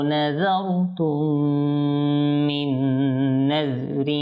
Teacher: এরপর এখানে মিম সাকিন এসেছে, মিম সাকিনের পর যেহেতু মিম এসেছে তো এখানেও আপনার ইদগাম হবে আর ইদগামে শাফাবি হবে।